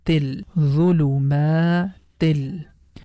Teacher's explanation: So here the sound of noon is completely gone. T is going to connect with lam. The pronunciation becomes til. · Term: Idghaam